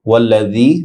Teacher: ওয়াল্লাযী জাল নরম হবে, এক আলিফ লম্বা হবে।